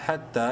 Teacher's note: ح تا زبر حت، تا کھڑی زبر تا، حتی یا سائلنٹ ہے، تا کو ایک الف برابر لمبا کیا گیا کھڑی زبر کی وجہ سے